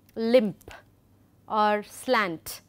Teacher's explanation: these are the homoorganic word final nasal stop clusters